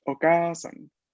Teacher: lo que hay que hacer en este caso es alargar la vocal, ¿no? O sea, pronunciarla más larga de lo normal. Okasan, una A larga.